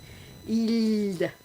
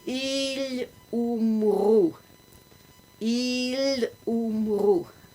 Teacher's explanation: L is the bright one, where you lift your tongue to the roof of your mouth and you keep it flat. You don't roll it back.